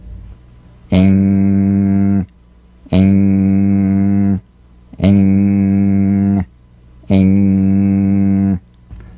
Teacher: practice the final NG with no drum beat as the tongue leaves the soft palate at the end of the word.